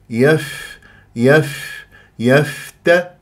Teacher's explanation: الفاء مخرج ضعيف وخاصه لما يكون ساكن فلازم انا اجيب الهواء واجيب الصوت حتى اسمع لانه جريان للصوت فيها رخاوه وجريان للنفس مهموسه